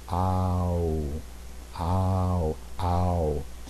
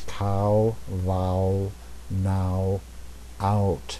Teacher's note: And what you'll notice is it goes from the most open vowel position, ah, to the most closed vowel position, oo. And as you're doing it, your lips get round and your jaw comes up. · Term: diphthong